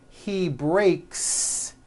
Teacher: the S you add also remains unvoiced